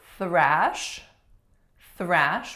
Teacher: thrash with a voiceless th may end up sounding like trash like garbage thrash versus trash our next one number 16 another